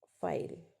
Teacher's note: at the end of the syllable it is dark और वेलर्स